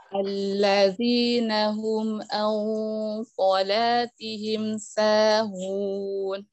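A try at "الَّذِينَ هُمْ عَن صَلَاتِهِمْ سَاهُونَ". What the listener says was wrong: Alhamdulillah, jazakillahu khairan.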